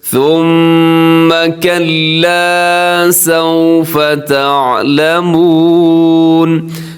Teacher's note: یہاں میم مشدد ہے تو میم مشدد پہ غنہ ہوتا ہے، ثا میں سیٹی سے بچنا ہے، آپ نے ہونٹ بھی گول کرنے ہیں.